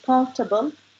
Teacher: the stress was put at the start, which says comfortable, people understood it more.